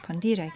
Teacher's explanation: another word in Latin called condire, with this accent on the second syllable